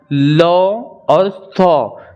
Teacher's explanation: तो ये सब जो होता है हमारे दंत को, हमारी जबान, हमारा जीभ जो है वो दांत को टच करता है बोलने में, तो हमारा उच्चारण स्थान इसका क्या हो जाएगा, दंत हो जाएगा।